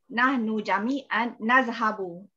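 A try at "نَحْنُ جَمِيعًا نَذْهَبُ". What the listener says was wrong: Jami'an nazhabu. Sahih.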